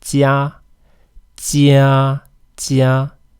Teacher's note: The tip of the tongue needs to be pushing against the hard palate.